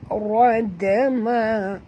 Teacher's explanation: Kena lantun dekat dalnya, dan ra ni kena baca tebal